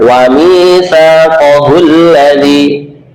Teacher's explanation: Hamzah wasol ini kalau digabungkan wa mitsaqahul ladzi, hamzahnya tidak berbunyi. Tapi kalau dijadikan permulaan kalimat berbunyi, yaitu fathah.